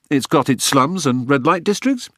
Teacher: Cyberspace is like a giant city, the scrofulous oaf insisted in vowels that made Ashley wince and an intonation that rose at the end of every sentence, as if everything this poltroon said were a question